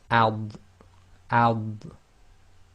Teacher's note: the Dodd is normally pronounced with the left side of the tongue touching the upper left teeth